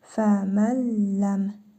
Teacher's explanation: Yenə idğam-ı bilə-qünnə qaydasıdır. Nun hərfini tələffüz etmirik. Ləm hərfini isə şəddəli tələffüz edirik. Fəməlləm. Mim hərfinin üzərində cəzm var.